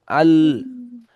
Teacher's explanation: আল হামজা লামজাবার আল এখানে জজম বা তাসদিদ তাহলে হামজা আল আল একটু ধরে রাখবেন আল বলে ছেড়ে দেবেন না জিবটা উপরে লাগবে আল জিবটা উপরে যখন লাগবে মাড়ি থেকে লাগবে তখন আলজিটা উপরে